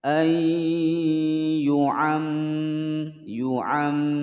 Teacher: Ayyu'am, yu'am, mim bertasydid ditekan ditahan selama dua ketukan